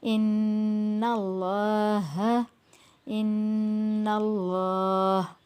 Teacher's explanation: اللہ کی لام کو کھینچیں گے بھی اور موٹا بھی پڑھیں گے